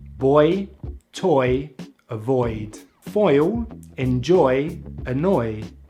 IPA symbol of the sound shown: ɔɪ